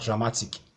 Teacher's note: Then you have dramatic, it's ending in IC, so it obeys this formula. So you have to stress ma, the syllable before the last one. That's the penultimate syllable.